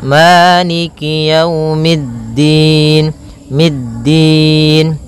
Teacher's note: posisi makhrajnya adalah di antara gusi atas dan gigi seri atas maka tempelkan ujung lidah kepada e di antara keduanya